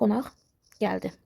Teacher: Samitlə söz gəlməli idi. Q tələffüz edilir x kimi.